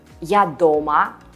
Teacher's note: Дома – houses. While дома with a stress on the first syllable